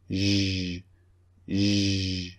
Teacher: The lips are protruding, okay? Not necessarily rounded, but protruding.